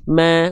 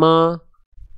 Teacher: mimnya dibaca tipis ma bukan mo